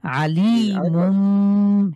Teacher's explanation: আলি আতে টান নাই লিতে টান আছে